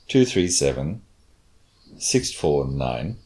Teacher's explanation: The next worst one of our four was this falling intonation at the end. So it's a grouping, but it's a little fall at the end